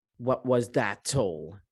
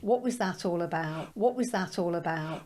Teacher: Now, she only left the T here in this word, that's all about, because there is a connection between T and A, between a plosive T and what comes as a vowel. So it just creates more unity when we say, what was that all?